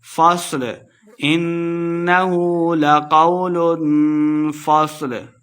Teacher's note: صاد کو موٹا پڑھنا ہے، فا کو صاد کے ساتھ ملا کے پڑھیں گے ، لام کے اوپر ہم نے وقف کر دینا ہے، فصل،